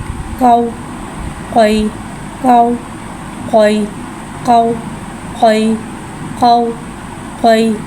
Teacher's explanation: क़ौफ़ को एक अलिफ यानी 3 हरकत के बराबर खींच के पढ़ेंगे। क़ौफ़ हुर्फ़ मुस्तआलिया है, लिहाजा इसकी आवाज़ हलक से मोटी अदा होगी।